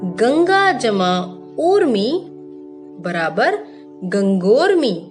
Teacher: जब किसी दीर्घ आ स्वर की संधि दीर्घ उ स्वर से होती है तो ओ स्वर का उच्चारण होता है।